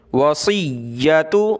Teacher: صاد کو موٹا کریں گے، یا کو سخت کریں گے تشدید کی وجہ سے